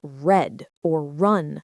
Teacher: Another common challenge is the R sound. In words like red or run, the tongue does not tap the roof of the mouth. · the tongue does not tap the roof of the mouth. Instead, it curls back slightly towards the throat. Your tongue tip shouldn't touch anything.